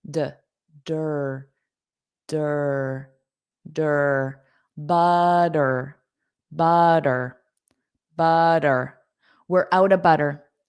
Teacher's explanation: Those two T's will become a soft d.